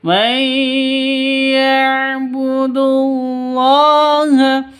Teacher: Cara bacanya masuk ke ya disertai dengung karena idgham bigunnah